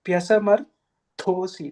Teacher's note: Pyasamarthosi, that th is also Mahaprana.